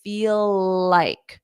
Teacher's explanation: feel ends in an L but like starts in an L so I can combine those together and just say feel like so I say feel and then